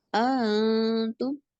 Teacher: पहला हमजा लंबा नहीं होगा, दूसरे में तस्हील करनी है